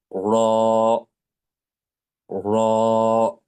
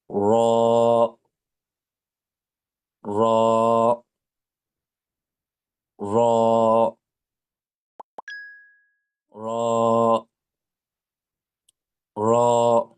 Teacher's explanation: আপনাকে একটু মোটা করে, অর্থাৎ জিহ্বার গোড়াটা একটু উপরের দিকে উঠিয়ে দিয়ে উচ্চারণ করতে হবে র। র। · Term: মোটা অক্ষর